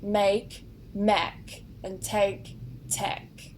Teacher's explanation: some words with the spelling ake at the end are sometimes pronounced with an ek instead of an ake. This only appears with certain words like make, mek, and take, tek.